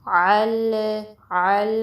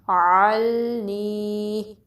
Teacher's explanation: لام ساکن کو پھر ہلانا نہیں ہے، اس پہ کلکلا نہیں کرنا